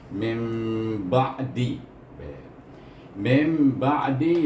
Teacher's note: Mim ditambah huruf mim di situ menunjukkan nun sukun bertemu dengan huruf kita baca dengan iqlab, iaitu bunyinya mim lebih kepada huruf mim itu